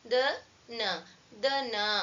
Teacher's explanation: ಅಲ್ಪಪ್ರಾಣ ದ ನ less breath we have to use less breath